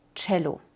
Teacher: suena como ch, como una T seguida por una sh